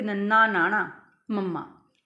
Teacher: means ਅਸੀਂ ਨੱਕ ਦੇ ਰਾਹੀਂ ਆਵਾਜ਼ ਨਿਕਲੇ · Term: ਨਾਸਿਕਤਾ